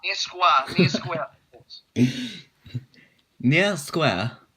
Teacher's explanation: Although there is a marked difference between vowel sounds in the words near and square for British and American English speakers, the vowel sounds are the same in New Zealand English.